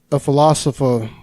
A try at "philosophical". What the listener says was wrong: You added a syllable in there, I think. It was a little scrambled.